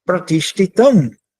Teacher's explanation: Esse S, um ponto embaixo, ele é o S cerebral, ou seja, toda vez que você pronuncia, a língua toca ou se projeta para o céu da boca